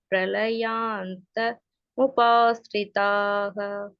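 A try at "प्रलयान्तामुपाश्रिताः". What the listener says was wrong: பிரளயாந்தாம் உபாஷிதாக்கு பிரளயாந்த உபாஷிதா சொல்லிட்டு அது மட்டும் கொஞ்சம் கரெக்ட் பண்ணிக்கோங்க. சிந்தாம பரிமேயாஞ்ச பிரளயாந்தா முபாஸ்ரிதாக.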